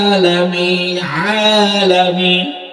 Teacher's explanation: এর মানে হইল পড়ার সময় আপনাকে গলার ভিতর থেকে ধাক্কা দিতে হবে। আলামিন পড়ার সময় আইনটা গলার ভিতরে চাপ দিতে হবে